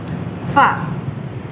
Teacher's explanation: Huruf fa ini keluarnya dari bibir bawah, bibir bagian bawah, fa. Jangan lupa kita meletakkan satu titik di bagian atasnya.